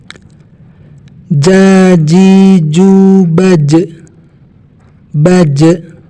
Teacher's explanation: Ada pantulan ya, karena ini jim huruf qalqalah.